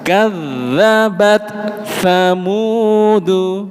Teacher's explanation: huruf ta itu makhrajnya lidah di dalam Pak Bu. Ujung lidah ketemu dengan perbatasan gigi atas dan gusi. · Sementara huruf tha itu lidahnya keluar sedikit. Jadi pasti pindah makhraj.